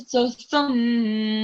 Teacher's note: it's mim mushaddad. So it should be given a nasal sound.